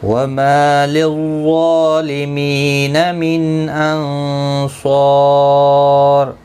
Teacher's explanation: نون ساکن کے بعد حروف اکفا کا صاد ہے، اخفا حقیقی ہوگا، یہاں پر گنہ کے ساتھ پڑھیں گے.